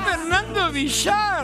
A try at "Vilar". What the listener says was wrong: No. No. No, no. No. Una sola L. Villar. Villar.